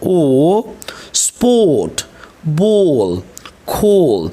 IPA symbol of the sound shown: ɔː